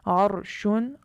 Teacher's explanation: اگلی صورت ہے را کو پر پڑھنے کی کہ جب را ساکن حالت میں ہو اور اس سے پہلے کلمے پر زبر یا پیش ہو، جیسا کہ عرشن، را ساکن ہے، عین پر زبر کی وجہ سے را ساکنہ کو پر پڑھیں گے